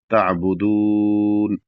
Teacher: اور اس کے بعد جب تعبدون میں رکیں گے تو یہاں پر اخیر میں نون کو جب ساکن کریں گے تو یہاں پر تقریباً 3 سے 4 الف کے برابر کھینچ کے رک سکتے ہیں یا کھینچ کے رکیں گے، 3 الف کے برابر تقریباً کھینچ کے رکیں گے۔ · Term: مد